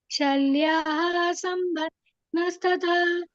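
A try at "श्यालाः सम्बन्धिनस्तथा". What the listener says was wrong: ಶಲ ಅಲ್ಲ ಶಾಲ್ಯ ಶಾಲ ಸಂಬಂಧಿನಿ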